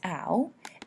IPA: aʊ